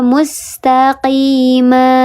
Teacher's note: Nah, di sini namanya mad'i wad. Dibacanya panjang 2 harokat, tanwinnya hilang.